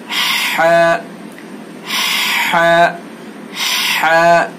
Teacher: حلق کا بیچ والا جو حصہ ہے وہاں سے ہم ہا کو ادا کریں گے.